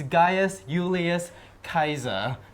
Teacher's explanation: there's no j sound in Latin, and there's no s sound in Latin. It's Gaius Julius Caesar.